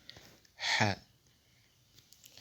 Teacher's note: Alors, associé à la voyelle Fatha, A, on obtient Ha. Ha se prononce au bas de la gorge, c'est-à-dire le pharynx, en soufflant, donc c'est une lettre gutturale